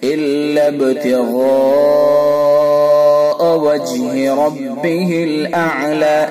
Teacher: جیم کے اندر قلقلہ ہوگا، را کو پر کر کے پڑھیں گے۔